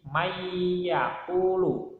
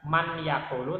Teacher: Kita praktekkan ke definisinya yang tadi tadi ya, yaitu ketika huruf pertama mati, huruf yang kedua hidup, tapi ketika dibaca seperti halnya huruf yang ditasdid. Berarti seolah-olah nonnya ini enggak ada, cukup iya-nya yang ditasdidi. Jadi mayyaqulu, bukan man yaqulu tapi mayyaqulu. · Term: idgham bihunah